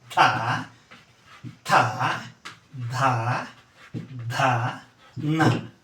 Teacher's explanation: ಅಂತ ಹಲ್ಲಿನ ಸಹಾಯದಿಂದ ಉಚ್ಚರಿಸಲ್ಪಡುವಂತ ಅಕ್ಷರಗಳು ದಂತ್ಯ ಧ್ವನಿಗಳು ನಾವು ನಾಭಿಯಿಂದ ತೆಗೆದುಕೊಂಡಂತಹ ಉಸರನ್ನ ನಾಲಿಗೆಯ ಮೂಲಕ ಹಲ್ಲನ್ನ ಕಚ್ಚಿ ನಂತರ ಉಸರನ್ನ ಬಿಟ್ಟು ಕೆಲವು ಧ್ವನಿಗಳನ್ನ ಉತ್ಪನ್ನ ಮಾಡ್ತೀವಿ ಅವೇ ತವರ್ಗದ ಧ್ವನಿಗಳು ಥ ಧ ಧ ನ ಈ ಐದು ಅಕ್ಷರಗಳು ದಂತ್ಯ · ಧ್ವನಿಗಳು ಯಾವುದು ಅಂದ್ರೆ ದಂತ್ಯ ಅಂದ್ರೆ ಹಲ್ಲು ಅಂತ ಹಲ್ಲಿನ ಸಹಾಯದಿಂದ ಉಚ್ಚರಿಸಲ್ಪಡುವಂತ ಅಕ್ಷರಗಳು ದಂತ್ಯ ಧ್ವನಿಗಳು ನಾವು ನಾಭಿಯಿಂದ ತೆಗೆದುಕೊಂಡಂತಹ ಉಸರನ್ನ ನಾಲಿಗೆಯ ಮೂಲಕ ಹಲ್ಲನ್ನ ಕಚ್ಚಿ ನಂತರ ಉಸರನ್ನ ಬಿಟ್ಟು